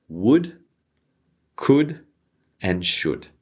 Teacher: so as you can see these L's need to be silent